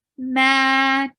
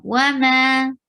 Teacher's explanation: For fatha, open your jaws. Ma, 2 counts long. Because before alif you find fatha. So you make it 2 haraka long.